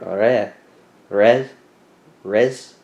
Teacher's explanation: You don't roll the R. Red, like it's in the back of your throat. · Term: French R